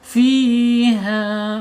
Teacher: Fiha mad tabi'i, kemudian secara makhraj ya al-jaub. Al-jaub itu tenggorokan saja ya, tidak boleh masuk hidung ya. Fiha kha, hanya mad tabi'i, kemudian al-jaub sama dua-duanya nih, mad tabi'i panjangnya 2 harokat, 1 alif atau 2 ketukan ya, atau secara makhrajnya ada di al-jaub, dua-duanya sama ya.